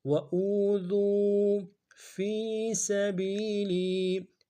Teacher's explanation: فی میں فا کو یا کے ساتھ ملانا ہے، یا مدہ ایک دال میں کھینچیں گے ، سبیلی میں سین کو نرم سے ادا کریں گے، باریک